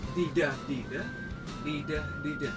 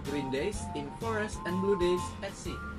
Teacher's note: Moving on to meters, Stevenson's lines frequently feature iambic meter, particularly iambic tetrameter. This means each line follows a rhythm of unstressed and stressed syllables. Dida, dida, dida, dida.